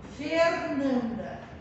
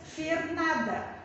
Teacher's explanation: Sinal de nasalização vem a ser aquele sinal que dá uma ideia de como se a gente estivesse falando, fechando o A, né? Ou dando como se a gente estivesse falando pelo nariz